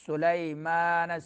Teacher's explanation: سین میں سیٹی نکالیں گے